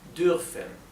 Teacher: la R alemana es gutural, con la parte de bien atrás de la garganta, abajo